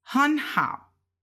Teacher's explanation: We went up second tone because it's 2/3 tones.